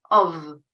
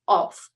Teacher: so the vowel is different:/ɒ/, and the consonant is also different: /f/ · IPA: /ɒf/